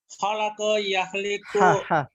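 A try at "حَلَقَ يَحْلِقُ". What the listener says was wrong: Ha ya, bukan kha.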